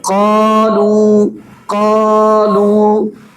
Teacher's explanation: اب قالو کے اندر قاف بھی پر ہے اور الف مدہ بھی۔ الف مدہ کیوں پر ہے؟ کیونکہ الف مدہ کا ماقبل پر ہے، اس لیے الف مدہ پر پڑھا جا رہا ہے۔